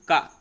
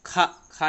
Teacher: और ये जो महाप्राण है, ये प्रत्येक वर्ग का दूसरा तथा चौथा व्यंजन होता है। अल्प प्राण में कम हवा निकल रही थी का, और खा ये हमारा महाप्राण है, क्योंकि ज़्यादा हवा निकल रही है